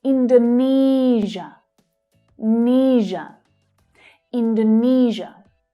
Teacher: So here we've got the third syllable stressed.